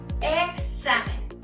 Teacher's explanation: si el hablante pronuncia de una forma más relajada, puede pronunciar la X como GS, es decir, examen.